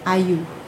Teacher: Vokal depan luas ini contohnya yang hadir dalam perkataan ayu. Yang dibunyikan sebagai A dan contohnya hadir dalam perkataan ayu.